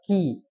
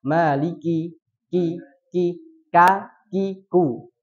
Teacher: ada nafas yang keluar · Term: sifat hams